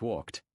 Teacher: The ed in walked makes a sharp T sound.